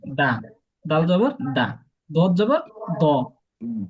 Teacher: জিহ্বার আগা মাড়ির উপরের সাথে দাঁতের সাথে লাগাইয়া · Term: ডাল